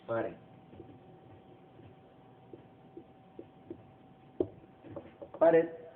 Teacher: Pared, como vemos, no lleva signo ortográfico, pero sí lleva la acentuación en red. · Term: acento prosódico